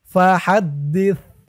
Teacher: দাল সাজের দিস, সার উচ্চারণটা একদম নরম পাতলা হবে। জিব্বার মাথা উপরের দাঁতের মাথার সাথে লাগবে সার উচ্চারণটা করার সময়।